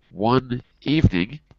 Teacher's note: in the expression one evening we pass the n to the next word evening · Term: c to v